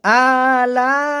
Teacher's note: ফাবিআই আলা আ একালি পরিমাণ টান হবে। আলা লা এখানে মধ্যে মুত্তাসিল চারের পরিমাণ টান হবে